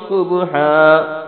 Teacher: صبحا، صاد کو موٹا پڑھنا ہے، با پہ کلکلا کرنا ہے، آخر میں ہا کو اس طرح پڑھنا ہے۔